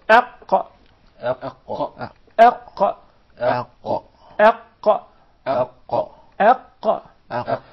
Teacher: There are several changes that take place in the mouth. The farthest side of the tongue is elevated, and there is a move in the uvula. That's why the قاف and the كاف together were put in a group by themselves, and they were called الحروف اللهوية, because of this uvula, this conical tissue which is hanging from the middle of the soft palate.